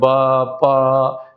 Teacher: होट जैसे आपने प बोला प बोला या ब बोला तो यहां पर आपके दोनों होठ जो है मिल वो क्या करते हैं हवा को बाधित करते हैं